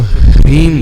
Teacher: तो ह्रीम बोलना, रीम रीम नहीं बोलना, रीम रीम नहीं, पहले ह का उच्चारण